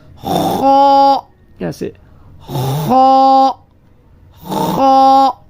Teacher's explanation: یہ خا حروف مستعلیہ میں سے ہے، موٹا حرف ہے، اس کو موٹا پڑھیں گے